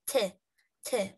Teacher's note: The tip of the tongue, اللي هو قلنا عليه this figure, okay? The tip of the tongue is touching the upper front teeth, high upper front teeth, so it's touching the front teeth, so we are producing the sound T, T, okay?